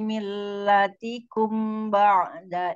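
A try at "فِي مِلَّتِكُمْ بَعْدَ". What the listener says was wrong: Millatikum berjumpa dengan ba itu ikhlab ya apa ikhfa safawi. Jadi dengungnya agak dilamain ya Om.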